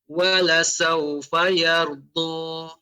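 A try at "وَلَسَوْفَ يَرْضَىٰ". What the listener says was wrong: Ra-nya lebih ditebalkan. Yardu.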